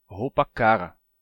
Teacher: ele não pronuncia esse R da ponta da língua, que a gente tem, R.